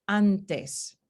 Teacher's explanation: cambiamos el punto de articulación de la consonante para ser el mismo como la consonante siguiente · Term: asimilación